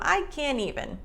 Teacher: there's no air expelled at the end with a t sound so i can't even it almost sounds like can but it